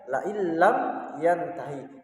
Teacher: Tetapi dibaca la illam yantahi. Jadi seakan-akan nun sukunnya ini hilang atau tidak dibaca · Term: idgham bila gunnah